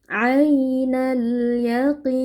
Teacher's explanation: Ain di sini ada ya lin kita baca ya dengan lunak yaitu ya ya sukun sebelumnya fathah